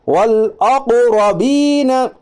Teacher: اب حمزہ چونکہ قاف کے سمیل کی گر گیا تو کیا آئے گا، قاف کے اوپر جزم ہے، قاف حروف قلقلہ کے 5 حرفوں میں سے، اس لیے قاف پر قلقلہ ہوگا